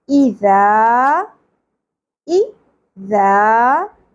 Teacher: اس کو نرمی سے ادا کرنا ہے، ز کی طرح سیٹی اور بزنگ ساؤنڈ نہیں آنی چاہیے۔ ذال، زبر کے ساتھ الف حرف مدہ ہے، ایک الف کے برابر کھینچنا ہے۔